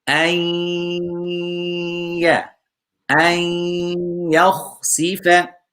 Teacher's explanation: Here we have noon sakin followed by ya. We need to make idgham.